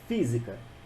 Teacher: a sílaba tônica é a antepenúltima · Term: proparoxítona